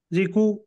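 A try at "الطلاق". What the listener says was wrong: नहीं, ये काफ समझ में आ रहा, आप बोल रहे हैं तो कॉफ का मखरज अदा करिए। अत्तलाकु। तो मोटा, लाम बारीक, कॉफ मोटा। ये काफ का मखरज अदा नहीं हो रहा, काफ पढ़ रहे इसको आप।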